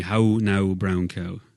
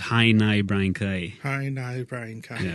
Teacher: if you were up north the vowel changes to an I